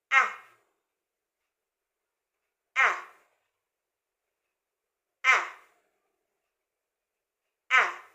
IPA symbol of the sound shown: æ